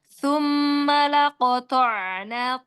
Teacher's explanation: sa-nya ditaruh di ujung lidahnya, ya. Runcingkan.